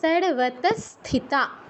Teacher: বিসর্গর পর দন্তস আছে, তাই বিসর্গর স্থলে দন্তস হসন্তর মতো উচ্চারণ হবে, সর্বত স্থিতা।